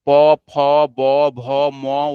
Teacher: প ফ ব ভ ম উচ্চারণের সময় শ্বাসবায়ু ওষ্ঠে বা ঠোঁটে বাধা পাচ্ছে, সেই জন্য এগুলো ওষ্ঠ বর্ণ।